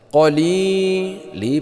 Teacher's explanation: Qali li panjangnya 2 harakat mad tabi'i